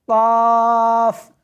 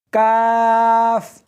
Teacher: اس حرف کو موٹا کر کے پڑھنا ہے، قاف، اس حرف کو باریک کر کے پڑھنا ہے، کاف